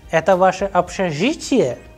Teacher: when I am asking a question, as you can see, the sound pitch is going higher at the end.